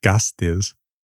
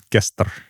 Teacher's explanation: So for example, gastis is an element in a lot of names in proor that becomes guest in old Norse. So the I mutates the A and drops out and the Z turns into an R